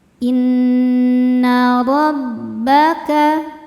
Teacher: dibaca tafkhim karena berharakat fathah cara membacanya ro ditebalkan · illalam [bernyanyi] ma nunnya dihukumi ghunah musyaddadah karena nun bertasydid cara membacanya berdengung dengungannya tahan ya kurang lebih dua harakat